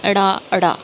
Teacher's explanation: ਹੁਣ ਫਟਕਵਾਂ ਵਿਅੰਜਨ ਹੈ ਸਿਰਫ ੜਾੜਾ, ਠੀਕ ਹੈ। ਉਚਾਰਨ ਸਮੇਂ ਜੀਭ ਤਾਲੂ ਨੂੰ ਛੂ ਕੇ ਫਟਕੇ ਨਾਲ ਹੇਠਾਂ ਆ ਜਾਂਦੀ ਹੈ